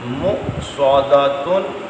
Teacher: مصادتن، نہیں سادہ نہیں، صاد ہے، مستعلیہ ہے، موٹا، سادہ پڑھیں گے سین بن جائے گا، سین نہیں ہے صاد ہے۔